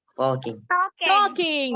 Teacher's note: The L is silent.